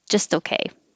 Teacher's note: Don't release the T.